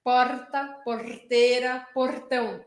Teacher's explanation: a língua ela encosta no céu da boca logo atrás dos meus dentes de cima aqui ó e aí ela vibra porta Porteira portão como se